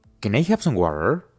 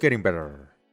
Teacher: cuando la t se encuentre en medio de dos vocales va a sonar como una r suave